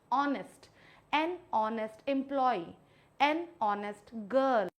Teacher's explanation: एच की जो ध्वनि है वो दबा दी जाती है तो यहां पे इसको मैं पढूंगी ऑनेस्ट एन ऑनेस्ट एंप्लई एन ऑनेस्ट गर्ल, एन ऑनेस्ट student और एन ऑनेस्ट टीचर। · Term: साइलेंट एच